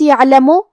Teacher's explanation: کلمت یہدی، یہاں ہا ہے تو ہم ہا کو حلق کے نیچے والے حصے سے پڑھیں گے. کلمت یعلم، عین ساکن ہے تو ہمیں عین کو ظاہر کرنا ہے اور عین کی ادائیگی حلق کے درمیان والے حصے سے ہے